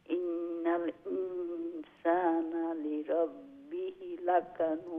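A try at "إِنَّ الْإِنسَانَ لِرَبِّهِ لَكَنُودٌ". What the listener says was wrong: লিরাব্বিহি হার নিচে খাড়া জের আছে না, একালি লম্বা। বিহি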